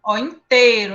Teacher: A gente nem fala o I às vezes, né? Em alguns pronúncias.